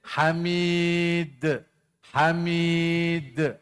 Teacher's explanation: Hamid itu qalqala kubra jangan tarik jangan tarik